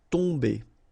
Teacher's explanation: Okay, so remember, you've got O-M here, but after that you've got a consonant, so it does mean that this combination of O-M will give you the sound on. Okay, you don't pronounce the M at all, so it's really a nasal, so it goes in your nose